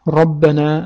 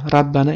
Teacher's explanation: ro harfining ustida ham fatha kelganda ra emas, ro deb talaffuz qilinadi